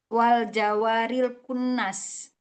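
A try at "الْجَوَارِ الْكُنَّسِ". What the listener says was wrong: Enggak pakai wa, al Jawa.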